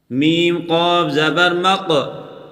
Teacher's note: قاف پر قلقلہ کریں اور قاف کو موٹا کر کے پڑھیں۔